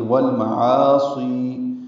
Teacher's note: پڑھیں گے، والمعاصی لام ساکن پہ اظہار، عا الف مدہ ہے، عین وسط حلق سے ادا ہوگا ، دو حرکات لمبا ہے، سی یا مدہ ہے، دو حرکات